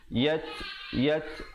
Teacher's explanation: Yat ada hamas di situ bunyi anginnya